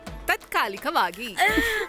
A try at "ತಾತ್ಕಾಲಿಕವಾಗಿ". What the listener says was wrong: ಅಯ್ಯೋ, ತಾತ್ಕಾಲಿಕಕ್ಕೆ ತಾಗೆ ದೀರ್ಘ ಕೊಡಿ.